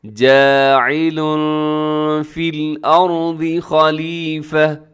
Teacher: فی الارض خلیفہ، جاعل میں تنوین ہے لام کے اوپر اور تنوین کے بعد فا حروف اخفا میں شامل ہے تو اپنے آواز کو یہاں پر کیا کرنا ہے، اخفا کرنا ہے